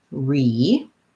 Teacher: we start with the tense e vowel